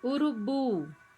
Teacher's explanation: Bu é a sílaba tônica.